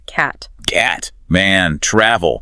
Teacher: your tongue is really low and forward in your mouth. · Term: short A